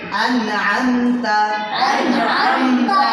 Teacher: প্রথম আন হামজা দিয়ে তারপরে আম আইন দিয়ে